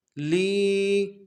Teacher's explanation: لام کو یا کے ساتھ ملانا ہے، یا مدہ ایک مقدار میں کھینچیں گے